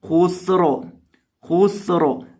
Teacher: سین کے اندر سیٹی کی آواز پیدا کریں گے، خو کو اور را کو دونوں کو موٹا کر کے پڑھیں گے